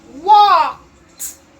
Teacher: Even though it's ED, you hear T when you're sounding it. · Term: T sound